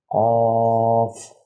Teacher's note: یہ موٹا قاف ہے، اسے منہ بھر کے ادا کرنا ہے